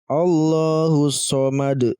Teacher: Maka kita pantulkan teman-teman. Kita pantulkan huruf dal ini karena masuk dalam kategori qalqalah kubra.